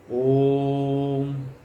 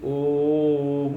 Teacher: इसका उच्चारण किस प्रकार हो इसके विषय में कहा, प्रणवम तु प्लुतम कुर्यात्। प्लुत में, प्लुत से कहने से त्रिमात्रिक व्यवस्था आती है, तीन मात्रा की बात आती है, तीन मात्रा में प्लुत में उच्चारण हो।